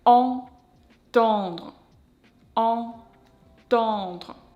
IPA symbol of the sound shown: ɑ̃